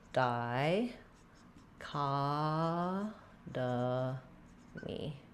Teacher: we have stress on the ka syllable. · Letter O says the ah vowel, ka. And we have secondary stress on the first syllable di. Letter I here says the I diphthong.